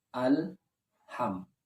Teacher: Ketika mengucapkan al, lidah masih menempel. Dan ketika kita mengucapkan ha, berbarengan dengan menariknya lidah.